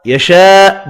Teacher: بڑی مد کو 5 الف کی مقدار میں کھینچ کر پڑھیں گے. حمزہ ساکن پڑھا جائے گا وف کی صورت میں.